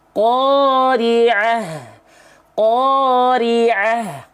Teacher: H besar itu dia punya sifat hams dan rikhwah atau rokhwah. Mengalir nafas, ya, mengalir suara. Nah, jadi jelas mengalir nafas dan suaranya.